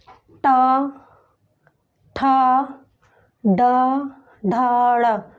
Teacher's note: इसका उच्चारण स्थान है मूर्धा।